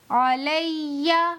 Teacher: یہاں یا پر تشدید ہے، یہاں بھی حرف مشدد کا قاعدہ ہے، اسی لیے کہ تشدید آ گئی ہے تو یہاں بھی 2 مرتبہ ملا کر پڑھیں گے، یعنی لام کو یا سے ملا کر پڑھیں گے اور 1 بار یا کو اپنی حرکت سے پڑھیں گے، جیسے علیہ۔